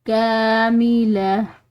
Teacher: लाम के बाद आने वाली जो ये गोल ता है ये वक्फ की सूरत में हाँ पढ़ी जाती है, तो यहाँ पर वक्फ मुतलक की अलामत है, तो इस पर हम वक्फ करेंगे, तो वक्फ की वजह से ये गोल ता जो है ये हाँ में बदल जाएगी।